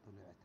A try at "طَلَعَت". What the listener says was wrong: إذا طلعت ليش قطو هنا فتحة طلعت طلعت شوف الحركات